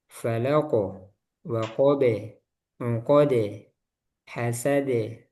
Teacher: qof mantulnya tebal, ba tipis, dal tipis